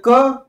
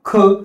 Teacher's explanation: क हा पूर्ण स्फोटक व्यंजन आहे आणि अर्धस्फोटक व्यंजन हा ख आहे